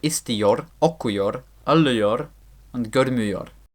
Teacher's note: the first vowel, the I, assimilates as usual, but the o always stays the same